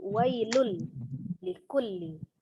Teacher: Jadi ditasdidkan saja ke huruf lamnya tapi tidak disertai dengan dengung ya. Maka dibacanya dari wailun menjadi wailul likulli. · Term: idgham bila gunnah